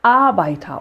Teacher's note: é sempre, de todo jeito, a sílaba tônica no começo